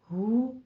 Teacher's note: तू हु, दोनों होंठों को गोल करके हु को हु नहीं पढ़ना, हु अक्से हलक से मोटी आवाज के साथ 2 काउंट करना है